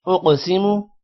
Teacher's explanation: قوف موٹا بھی ہوگا اور قوف پر قلقلہ بھی ہوگا جبکہ میم کو لمبا نہیں کرنا.